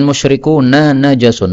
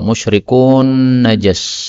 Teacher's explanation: nun ketemu nun, boleh idgham